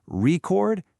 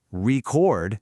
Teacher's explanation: Stress the first syllable record, and it's a thing, a noun. but stress the second syllable, record, and now it's an action, a verb. Same letters, totally different beat, totally different meaning.